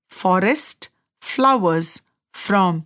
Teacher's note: When pronouncing we and F, the lower lip lightly touches the edge of the upper teeth. Air flows through the small gap creating a soft friction sound.